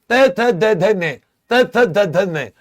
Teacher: ये जो जीभ है ऊपर के दांतों को टच करेगी।